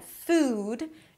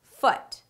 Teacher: food, it's a longer vowel sound in comparison to foot